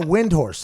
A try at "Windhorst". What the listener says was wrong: T on the end.